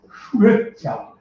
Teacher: অ আর ই একসাথে থাকতে পারে না। ও আর ই, এই ও আর ই মিললেই নতুন স্বর এ হয়ে যায়